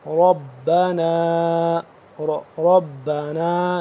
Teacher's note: ربنا، ربنا نون الف مد زبر نا، 2 سے 3 الف کے برابر اس کو لمبا کریں گے